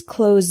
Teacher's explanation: the word close with a z sound is a verb this means to shut